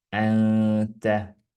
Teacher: see nuun hääldub nagu topelt ja läbi nina kergelt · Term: runna